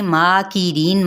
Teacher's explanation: میم پر مد اصلی بالالف کا قائم مقام ہے، ایک الف یا 2 حرکات کے برابر کھینچیں گے ، ری، را باریک پڑھی جائے گی، اور ری یا مدہ